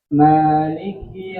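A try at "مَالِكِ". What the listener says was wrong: Li turun, jangan li. Mali.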